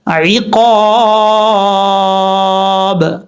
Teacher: حروف مستعلیہ کے بعد جب بھی الف آئے گا، جیسے حروف مستعلیہ کو پر کریں گے ایسے ہی الف کو بھی پر پڑھا جائے گا